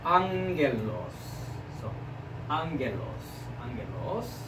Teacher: the accent is on the above of the alpha, so the rising sound.